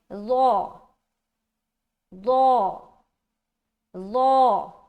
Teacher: ظا یہ کیا ہے؟ موٹا حرف ہے، موٹے طریقے سے نکالیں لیکن اس میں سیٹی کی آواز نہیں آئے